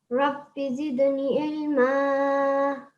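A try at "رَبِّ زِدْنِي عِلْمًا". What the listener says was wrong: Ilma. Ain. So the sound has to come from the back of your throat. Ain. Ilma.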